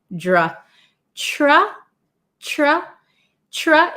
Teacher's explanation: Tra is like you're putting a T, ch. It's almost like a CH sound, tra.